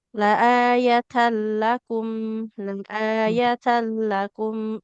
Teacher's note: huruf lam sendiri sifatnya tawas, aliran suaranya pertengahan, maka ini ya cepat saja mengalirnya